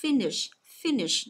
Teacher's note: mình nhấn vào âm đầu tiên và mình sẽ trùng xuống ở âm thứ hai